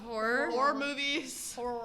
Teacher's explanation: I feel like I have to pronounce it as if it has an eer at the end instead of an o r